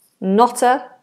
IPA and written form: nɒtə (not a)